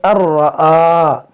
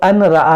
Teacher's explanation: نون ساکن کے بعد را، یہاں پر ادغام ہوگا، الرآ اس کو پڑھیں گے الرآ، اس کو ان رآ نہیں